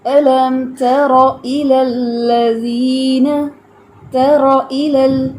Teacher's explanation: تا باریک ہے، را ہیوی ہے. الم ترى الى الذین، ترى الى، ٹھیک ہے.